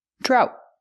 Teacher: the T is a stop T, drought. And remember, GH together is silent.